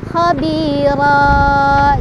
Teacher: Kalau di wasol atau disambung ini kan ronnya itu kita baca ya khabiron, pendek khabiron, khabiron. Nah, ketika berhenti si ro-nya ini, ronnya ini berubah jadi ro aja, fathah ya, berubah jadi fathah dan panjang 2 harokat. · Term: mad iwad